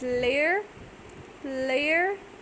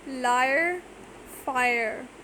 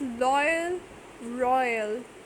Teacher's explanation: 2 vowels are together pronounced, and the third one is separately pronounced at the end